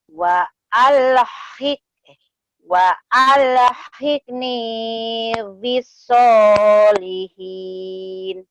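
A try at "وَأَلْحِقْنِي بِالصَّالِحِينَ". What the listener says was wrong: Kol-kolahnya belum dapat ya. Wa alhiqni bis-solihin.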